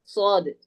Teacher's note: സ്വാദ് പറയുമ്പോൾ എന്താണ്, നാവിന്റെ അഗ്രവും മേലെയും താഴെയുമുള്ള മുൻപല്ലുകളുടെ ഇടയും, അഥവാ നാവിന്റെ അറ്റം എന്ത് ചെയ്യണം, ഇതേ രൂപത്തിൽ താഴത്തെ മുൻപല്ലിന്റെ ഭാഗത്ത് എന്ത് ചെയ്യണം, സ്വാദ് പറയുമ്പോൾ താഴത്തെ മുൻപല്ലിന്റെ ഭാഗത്ത് തട്ടണം.